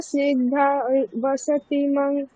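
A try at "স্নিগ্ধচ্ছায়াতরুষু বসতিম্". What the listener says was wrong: না, এখানে অনুসারটা ম বলবো, স্নিগ্ধ ছায়া তরুষু বসতিম, ম বলবো, ম।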